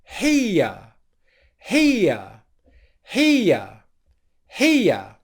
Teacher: all we very simply do in the ear diphthong is transition from the here into the schwa sound